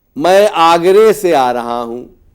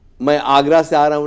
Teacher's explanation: آ ending اے ending میں بدل جاتا ہے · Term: امالہ